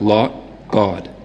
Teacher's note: it's going to be a little bit lip rounded in a Boston accent so more like lot God